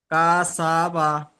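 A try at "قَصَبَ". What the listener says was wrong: না, টান দিচ্ছেন কারণ একটু টান হবে না। কোন অক্ষরের উপরে জাবার, শুধু কোন অক্ষরের উপর জাবার জের পেশ যদি আসে, কোনো টান হবে না। ডাইরেক্ট বলবেন কাসাবা।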